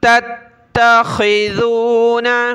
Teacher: تا کو دوسری تا کے ساتھ ملایا، دوسری تا کو سخت کیا، خا کو گلے سے نکالیں، ذال پر زبان نکالیں